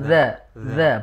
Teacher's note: ujung lidah ditempel ke ujung gigi seri di sini za